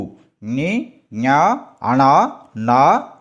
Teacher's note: అనునాసికాలు ఇవి ముక్కు సాయంతో పలికే అక్షరాలు